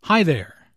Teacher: Notice the intonation in this greeting. It rises after hi and falls after there.